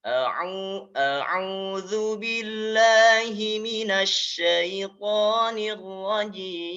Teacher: karena hakikatnya ya huruf ro ini cuma 2 getaran, hanya 2 getaran